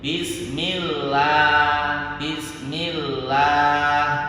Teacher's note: Kalau diawali kasrah dibaca tarqir, tipis.